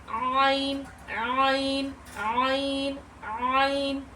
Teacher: हमारी आवाज जो है वह रगड़ खाती हुई निकलेगी।